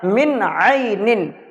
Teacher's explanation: بہرحال نون ساکن کے بعد آپ یہاں پہ غور کریں، یہ عین ہے جو کہ عین اس میں سے ہے، تو آپ سمجھ گئے کہ اس میں اظہار ہوگا، یعنی نون کی آواز کو ظاہر کر کے پڑھیں گے، اسے ناک میں ہمیں نہیں چھپانا ہے، صاف صاف پڑھنا ہے، من عین۔ تو اس طریقے سے نون کی آواز یہاں پہ ظاہر ہو گئی۔